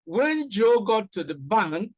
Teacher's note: And again, you see that we have the falling tone. So the comma not only indicates a pause, but also indicates a rising tone in this particular sentence